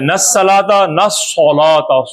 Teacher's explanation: یہ قرآن میں صاد موٹا، سین نہیں ہے صاد ہے